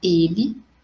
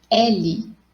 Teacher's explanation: Eu tenho ele, que tem um som mais fechado, e L, que é o nome da letra, né? Letra L. O som mais aberto.